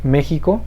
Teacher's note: es una palabra esdrújula que se acentúa en la e la equis va a sonar como jota